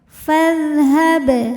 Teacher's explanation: ini alifnya hamzah washal ya, kalau di tengah tidak dibaca, jadi ini bukan pemanjang, fa pendek.